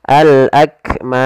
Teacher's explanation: kita boleh memanjangkan dua harakat boleh empat harakat dan boleh pula 6 harakat tapi kita Coba ambil yang empat saja yang tidak terlalu pendek